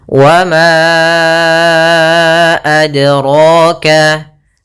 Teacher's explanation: Maka ma-nya kita panjangkan dahulu baru kita baca a-nya. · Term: mad jaiz munfasil